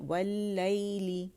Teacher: और लई जो है हमारे पास यहाँ पे यालीन हो रहा है, या साकिन से पहले हमारे पास फ़तह आ रही है. ली के लिए हम लाम के नीचे कसरा है तो ज़बान का दरमियानी हिस्सा जो है उठाएंगे और लोअर जा एक काउंट के लिए नीचे ड्रॉप हो जाएगा